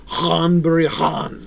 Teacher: th the th sound and you've got the voiced V sound so you've got the unvoiced H consonant and then the voiced consonant right so that GH is the voiced